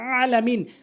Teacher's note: আইনটি হলকের মাঝখান থেকে উচ্চারণ করতে হবে।